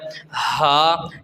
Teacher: یہ ہا سینے سے ادا نہیں ہوتی، بلکہ حلق کے نچلے حصے سے ادا ہوتی ہے ، وہ والا حصہ جو سینے کے قریب ہے اس سے